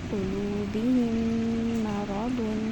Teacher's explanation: میم ساکن کے فوراً بعد میم آیا تو ہم نے آپس میں ایک دوسرے کو مرج کر دیا، ایک کو دوسرے میں داخل کر دیا۔